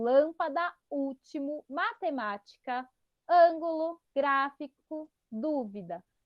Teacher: Então, lâmpada, último, matemática, ângulo, gráfico, dúvida. Todas essas palavras têm a antepenúltima como a mais forte. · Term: proparoxítonas